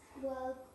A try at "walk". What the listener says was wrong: Walk ▁or ▁walk? Walk. ▁La ▁L ▁no ▁suena, ▁eh. ▁I'm ▁walking, ▁not ▁walking, ▁eh. ▁Walk.